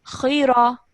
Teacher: the ra is a thick sounding ra because of the fatha, and it only should be it should only produce a sound of 1 second.